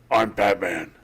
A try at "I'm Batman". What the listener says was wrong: It's more breathy.